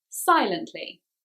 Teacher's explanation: this is a three syllable ly ending word so the stress is on the first syllable